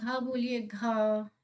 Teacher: घ बोल रहे तो क्या हो रहा है कंठ से आवाज आ रही है